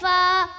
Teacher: सनाया औलिया का किनारा और नीचे के होठों का तरी वाला हिस्सा